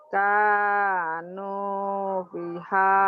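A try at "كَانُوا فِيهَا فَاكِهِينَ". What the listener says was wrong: Pi-nya panjang. Fiha. Kanu fiha fakihina.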